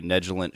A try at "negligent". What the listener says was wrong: I don't like how you pronounce negligent with a soft G.